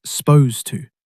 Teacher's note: You'll also hear people say it even faster, almost like s'posed to, dropping that first vowel sound entirely, cutting two syllables down to one.